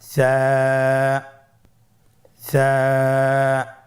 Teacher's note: সা হরফটির মাখরাজ হলো উচ্চারণ স্থান জিহ্বার আগা সামনের উপরের দুই দাঁতের আগার সঙ্গে লাগিয়ে উচ্চারিত হয়।